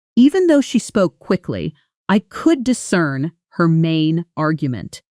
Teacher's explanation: Even though she spoke quickly, I could discern her main argument. Notice how could discern almost blends into one smooth sound. Could discern, with the stress landing hard on that second syllable, cern.